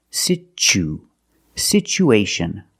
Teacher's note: We have two vowels together, the oo and the a. We need to link these vowels with the sound w, like the W sound